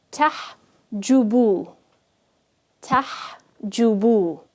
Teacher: I'm not going to make the ha any longer than the sound it gives on its own.